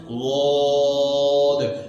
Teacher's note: جڑ اوپر کے تالو کی طرف اٹھ رہی ہے جس کی وجہ سے حرف موٹا ہو رہا ہے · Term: استعلاء